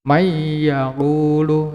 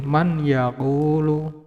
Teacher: Jadi huruf nunnya, non sukunnya dileburkan dengan huruf ya. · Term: idgham bi gunah